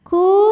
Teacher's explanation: sebab ada wau sukun yang didahului baris damah maka huruf Kaf dipanjangkan dua harakat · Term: Mad Thobi'i